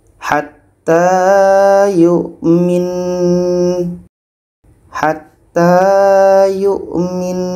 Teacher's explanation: kita dengungkan dulu baru matikan huruf terakhirnya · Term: wajibul gunah